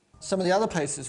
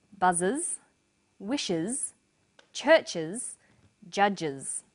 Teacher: The first pronunciation of the final S is is. It's pronounced this way after sounds such as s, z, sh, ch and j.